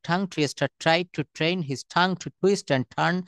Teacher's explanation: তুমি টি কে সব জায়গায় ঠি বলবা, ঠ।